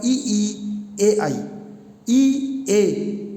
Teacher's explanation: जीभ के आगे वाले हिस्से का प्रयोग होगा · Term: अग्र स्वर